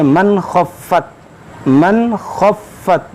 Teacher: یہاں پر اظہار کا قاعدہ لگے گا، یہاں پر ہم غنہ نہیں کریں گے